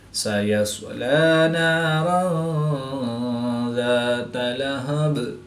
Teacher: دو زبر کی تنوین کے بعد ذال حروف اخفا میں سے ہے تو یہاں پر اخفا ہوگا، یعنی غنہ زمانی کر کے پڑھیں گے. وقف کی حالت میں با کی 2 زیروں کو ساکن کریں گے تو یہاں پر وقف کی حالت میں قلقلہ صغریٰ کر کے پڑھیں گے